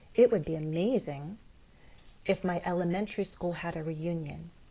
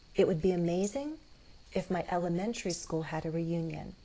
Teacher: I might do a low rise or that fall rise.